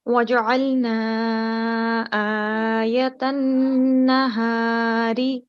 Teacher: It's a noon gunna, so we should make a nasal sound here for at least 2 seconds.